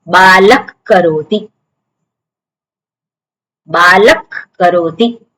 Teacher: જો વિસર્ગ પછી કકાર કે ખકાર થી શરૂ થતો શબ્દ હોય તો વિસર્ગનું ઉચ્ચારણ કકાર ખકાર જેવું થાય. જનરલી ખકાર જેવું કરતા હોય છે.